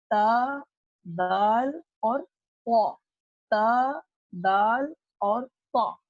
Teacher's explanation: یہ حروف ادا ہوتے ہیں زبان کی نوک کو ثنایا علیہ کی جڑ سے لگانے پر